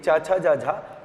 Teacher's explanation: ये स्पर्श व्यंजन की वे ध्वनियां हैं जिनमें उच्चारण के साथ साथ घर्षण भी होता है, इसलिए इन्हें स्पर्श संघर्षी भी कहते हैं, ये भी याद रखिएगा। · आपकी जीभ को ऊपर वाले हिस्से में, तालू वाले हिस्से में क्या करना पड़ता है, स्पर्श कराना पड़ता है। इसलिए चा, छा, जा, झा तालव्य होते हैं।